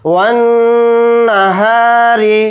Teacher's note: را کے نیچے زیر ہے، را کو یہاں پر باریک پڑھیں گے · ذال کے ساتھ الف مدہ ہے، ذال الف زبر ذا کو تھوڑا کھینچ کر پڑھیں گے